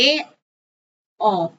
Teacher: अर्ध संवृत यानी आधा बंद मुंह